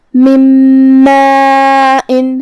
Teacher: پھر حرف المیم ہے کلمت ماء میں، جو کہ میم حروف الادغام بغنہ میں سے ہے، تو ہم یہ نون کو میم میں ملا کے غنہ اور تشدید کے ساتھ یہ حکم کو ادا کریں گے. من ماء، کلمت ماء میں یہاں مد ہے.